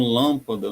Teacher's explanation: na antepenúltima, como lâmpada, no lã é a tônica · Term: antepenúltima sílaba